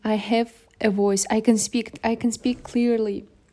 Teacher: Natural stress is placed on key words such as voice, speak, emphasizing the important ideas · The pitch rises on words like voice and falls on words like clearly, expressing his emotional triumph and growing self-assurance. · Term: Intonation